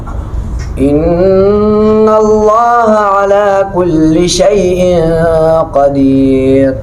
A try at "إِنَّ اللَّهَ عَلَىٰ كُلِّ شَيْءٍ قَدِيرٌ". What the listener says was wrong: भाई आखिर में क्या है? तो रा को वाज़ेह करो ना, क्यों नहीं करते हो? ये रा मोटा है बारीक है? क्यों? रा क्यों बारीक है? दाल के नीचे जेर की वजह से।